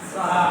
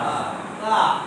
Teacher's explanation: জিহ্বার আগা উপরের দুই দাঁতের আগার সাথে লেগে উচ্চারিত হবে তা